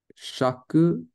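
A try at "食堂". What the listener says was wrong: So you said shaku. It is shoku. It's shoku.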